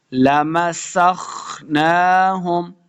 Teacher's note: وَلَوْ نَشَاءُ لَمَسَخْنَاهُمْ، لَمَسَخْ، سین پہ سیٹی کی آواز آئے گی، خواہ کے سامنے لانا ہے، خواہ کو موٹا پڑھیں گے، خواہ حروف مستعلیہ سے ہے۔ لَمَسَخْنَاهُمْ، نون کے اوپر کھڑی زبر ہے تو اس کو دو حرکات لمع کرنا ہے۔